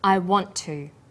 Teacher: The final t sound in want is held slightly longer on the tongue. Then to is pronounced. The t sound is pronounced only once. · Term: consonant plus same consonant linking